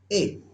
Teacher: ए दई तौ, कंठ तालु, अर्थात ए और ऐ जो दोनों वर्ण हैं इनको कंठ और तालु दोनों से बोला जाता है